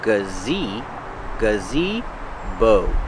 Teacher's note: the first sound is the relax uh then you have the long e gazi bow use the long o like know and go gazebo